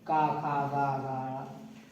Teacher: इनको कहा जाता है कंठस्थ, ये कंठ से बोले जाते हैं